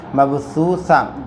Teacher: حروف قلقلہ کے 5 حروف میں سے با ہے، قاف تا با جیم دال، یہاں قلقلہ کریں گے، مبثو، سا وا پہ سو، واو ساکن سے پہلے پیش ہو، مدہ تھوڑا کھینچ کر پڑھیں، مبثوثہ، گول تا پر وقف کرنا، ہا ساکنہ بن جاتی، مبثوثۃن کے بجائے مبثوثہ ہو جائیں گا۔